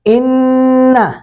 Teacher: نون مشدد پہ غنہ کریں گے، ان زبان کو تالو کے ساتھ لگائیں گے